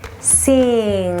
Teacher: you'll feel the NG, again, is a nasalized sound at the end of the word. So let's try the NG together from low to high, high to low in that siren effect.